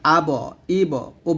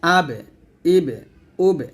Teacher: আব ইব উব এরকম বলি তো এরকম বলা যাবে না কারণ বা কিন্তু মোটা হরফ না বা পাতলা করে উচ্চারণ করতে হবে